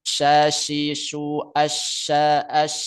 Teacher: tersebarnya huruf dari makhrajnya yang meluas sampai dinding dalam gigi atas dan bawah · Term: tafasyi